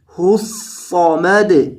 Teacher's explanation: یہ صاد ہے، یہ موٹے حروف میں سے ہے، اسے موٹا کیا جائے